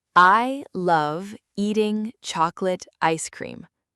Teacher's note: The words love, chocolate, and cream came out very clearly. They were louder, they were longer. Those are what we call content words. · words like eating and ice were pushed down. They were much softer.